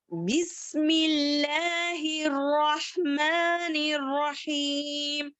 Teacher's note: बा जो है बंद होठों से गीले हिस्से से अदा होने वाला है।